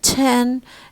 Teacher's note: When it comes at the beginning, just like ka, it is aspirated.